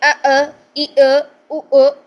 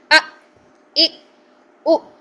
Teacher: ہم نے پچھلی لیکچر میں بھی اس کا قاعدہ پڑھا تھا کہ اگر حمزہ کے اوپر جزم آ جائے, یعنی حمزہ کو ہم نے ساکن کرنا ہو, تو حمزہ کی آواز کو جھٹکا دے کے بند کریں گے. تو یہاں پہ حمزہ ساکن آ رہا ہے, اس لیے ہم اس کی آواز کو جھٹکا دے کے بند کریں گے.